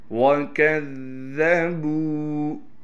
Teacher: وفاقا جزاء وفاقا إنهم كانوا لا يرجون حسابا وَكَذَّبُوا، کاف کو ذال سے ملائیں گے، ذال پر تشدید ہونے کی وجہ سے تھوڑا ٹھہراؤ بھی کریں گے اور ذال کو نرم پڑھیں گے۔ با کو کھینچنا ہے اس لیے کہ با کے بعد واو مدہ ہے۔